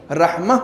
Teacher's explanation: آخر میں گولتے ہوگی تو وہ ہے میں بدل جائے گی، رحمہ پڑھیں گے اس کو